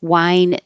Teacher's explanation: wine with a H and wine without the H sound exactly the same.